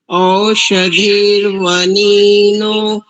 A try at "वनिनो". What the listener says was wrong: ठीक है, वनिनो, वनिनो, क्योंकि नकार में जो इकार है वो ह्रस्व है और नकार में जो ओकार है वह दीर्घ है। वनीनो नहीं करेंगे, वनिनो।